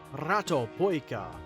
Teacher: I feel like that should be with a rolled R